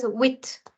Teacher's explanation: 8 in French is called huit. The H is silent and the T is sounded.